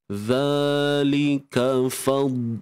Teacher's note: Huruf dad ni kita tebal, tapi jangan jangan dilantunkan. Zalika hanya bahagian tepi lidah kita sahaja yang mempunyai peranan yang besar.